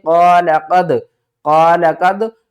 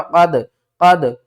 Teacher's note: یہاں پر دال ساکن ہے ہلا کر پڑھیں گے، حمزہ ساکن ہے جھٹکا دیں گے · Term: قلقلہ